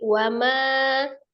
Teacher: manya kan yang panjang, wanya pendek